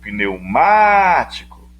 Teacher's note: a sílaba tônica dela não é a última nem a penúltima, é a antepenúltima. É uma proparoxítona, correto?